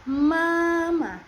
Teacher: Selanjutnya ada M, bunyi nasal bilabial pada bibir menutup udara keluar lewat hidung seperti pada kata mama